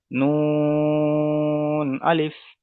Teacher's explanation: যেহেতু 3 আলিফ পরিমাণ টান, সেই জন্য 3 আলিফ পরিমাণ টেনে পড়ছি